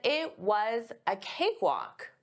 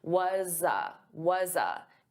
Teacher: So notice I'm linking the sounds and I'm taking that was but it's a z. It's a voiced sound. So I'm going to transfer that sound to a.